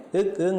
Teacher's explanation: அடுத்து கடை அன்ன ஒலிகள். கடைனா கடை அன்னத்தை தொட உச்சரிக்கப்படுபவை